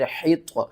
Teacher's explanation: طا حروف مستعلیہ میں سے ہے، اس کو ہم نے موٹا کر کے پڑھنا ہے